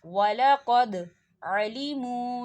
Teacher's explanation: وَلَقَدْ عَلِمُوا، وَلَقَدْ دیکھیے دال ساکن ہے اور دال پر قلقلہ ہوگا